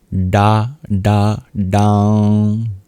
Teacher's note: For the bija, the seed itself, you curl your tongue back to pronounce it. That's why it has a dot under it, indicating that it's a little different.